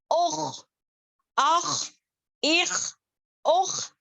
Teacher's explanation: خا کو ایک تو موٹا کریں گے اور خراج بھی آنی چاہیے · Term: ادنى الحلق